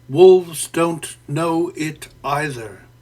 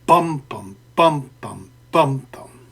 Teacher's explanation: a strongly stressed syllable followed by a less strongly stressed one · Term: trochaic tetrameter